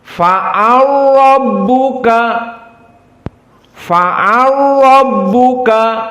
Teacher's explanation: Ra-nya musaddadah. Lamnya idgham, udghima. Maknanya melebur menjadi ra. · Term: idgham al-kabir